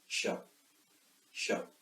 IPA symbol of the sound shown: ʃ